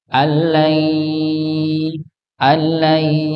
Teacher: keluar dari mulut dengan hidung ya maka di ditahan didengungkan